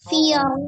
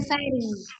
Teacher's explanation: Firo tebal, kalau fari baru tipis.